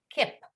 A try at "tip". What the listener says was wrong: It's not kip. It sounds like you're saying K-I-P. You want to say T-I-P, the tip of your tongue. Tip.